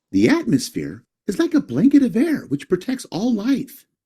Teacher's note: Veja que o tom de voz da pessoa sobe e cai. E você percebe a pausa aqui, ó.